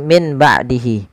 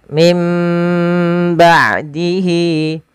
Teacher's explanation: Yaitu suara nunnya diganti dirubah menjadi huruf mim. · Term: iqlab